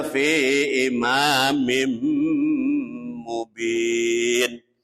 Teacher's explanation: Imamim itu di bawah mim ada 2 kasroh, namanya kasroh yang disebutnya tanwin. Bertemu dengan huruf mim, hukumnya dibaca idgham bihunna. Idgham bihunna artinya masuk dengan mendengung.